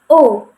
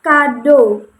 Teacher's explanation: kalau O ini posisi lidahnya itu berada di madia atas dan masih menggunakan lidah bagian belakang. Nah, tetapi pada O ini posisi bibirnya itu semi terbuka tetapi mendekati semi tertutup begitu. · pada O ini posisi bibirnya itu semi terbuka tetapi mendekati semi tertutup begitu. Jadi semi terbuka tetapi agak sedikit tertutup begitu.